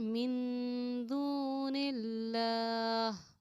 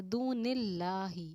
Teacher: اب اس لفظ اللہ کے لام سے پہلے آپ دیکھیں گے کہ زیر آ رہا ہے، تو لفظ اللہ کے لام کو ہم نے باریک پڑھا. اب ہم نے دونوں اللہ اللہ منہ بھر کے پر پڑھا نہیں ہے، یہاں پر ہم نے باریک پڑھا ہے، سمپل پڑھا ہے، دون اللہ.